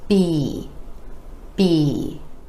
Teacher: it more stretch more duration and a little more energy e our lips come together for the sound and go into the vowel e